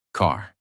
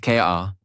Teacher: In American accent you clearly hear the R. Car not ka but car. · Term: American R sound